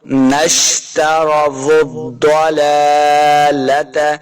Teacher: ضاد حروف مستعلیہ سے، اس کو موٹا کریں گے